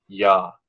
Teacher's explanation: So yumuşak ye makes the vowel before it like longer.